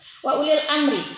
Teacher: alif lam komariah, alasan lamnya dibaca jelas